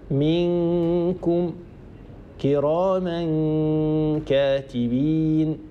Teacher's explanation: نطقت ميم مكسورة وهي الحرف الذي سبق النون الساكنة، ثم هيأت مخرج حرف الكاف وصاحب هذا العمل غنة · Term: إخفاء